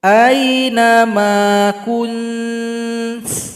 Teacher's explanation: Jadi ta itu kalau kita sukunkan ada bunyi hamas, bunyi nafas.